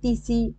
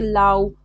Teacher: মানে প্রথম দিকে স্বরধ্বনি ছিল সেটা লোপ হয়ে গেছে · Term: আদিস্বর লোপ